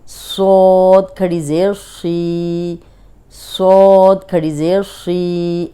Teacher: اب یہ صاد موٹا ہے اور زیر کے ساتھ بھی موٹا ہی ہوگا